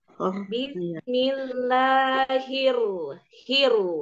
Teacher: huruf ro itu ada takrir takrir itu ada bunyi er